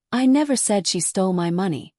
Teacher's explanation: say you want to imply that someone else did it. You would stress she. So it would sound like I never said she stole my money, which makes it sound like you're accusing someone else.